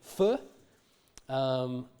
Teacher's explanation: is it's produced with the lips and the teeth for so it is a labial dental sound and it is a fricative because it's got continuous airflow